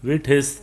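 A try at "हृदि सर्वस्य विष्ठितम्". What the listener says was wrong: पहले वी के बाद में सा बोलना है। विष्ठितं।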